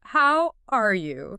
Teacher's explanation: a flat downward intonation, especially on the last word